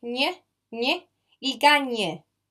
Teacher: So this G-N will sound nye, like you have your tongue here, and then you let go. It's like an N, and you let go, nye. You let go while putting the back of the tongue up, like nye. So basically, you go from an N to an G.